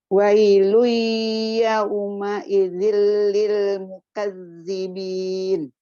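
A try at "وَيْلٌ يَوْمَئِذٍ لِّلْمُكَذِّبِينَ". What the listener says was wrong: Udah bagus. Tinggal masukin hidungnya. Tadi belum banyak. Masih kedengeran suara mulut. Wailui.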